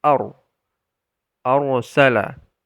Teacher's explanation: Ro juga merupakan huruf jahr dan dibaca dengan makhraj yang jelas sehingga tidak ada hembusan napas yang keluar. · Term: huruf jahar